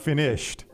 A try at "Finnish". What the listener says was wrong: Finnish. No D on the end there.